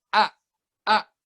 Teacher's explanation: cuman getaran suara doang nggak ada sama sekali angin yang keluar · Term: huruf hamzah